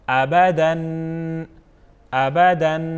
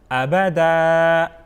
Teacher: آخر میں دو زبر جب آ جائے تو ہم اس کو ایک الف کر کے پڑھتے ہیں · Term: وقف